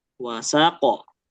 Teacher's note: harokat terakhirnya nggak dibaca, maka dia harus jatuhnya kayak sukun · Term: wakof